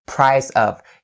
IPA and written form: praɪ-səv (price of)